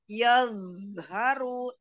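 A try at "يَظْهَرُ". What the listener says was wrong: E, jangan ditutup. apa ya, pita suara di tenggorokan itu jangan, jadi ada yadharu, yadharu. Jadi jangan, jangan ada gitu tertutup pita suaranya.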